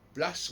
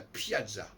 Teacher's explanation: On supprime le L, on n'a que le P.